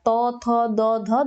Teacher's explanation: দাঁতে ঠেকছে তার মানে এটা হচ্ছে দন্ত বর্ণ ব্যঞ্জনের উদাহরণ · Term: দন্ত ব্যঞ্জন ধ্বনি